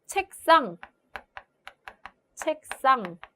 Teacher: 기역 때문에 뒤에 시옷이 된 소리로 발음이 되고 있죠. 경음화.